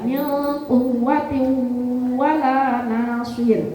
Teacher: "Quwwatiw" yang wau tasydid cukup ditekan saja, tapi yang idgham bighunnah tanwin bertemu wau itu selain ditekan harus ditahan. Penekanan dan penahanan.